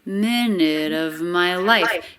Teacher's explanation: minute of linked together with a flat t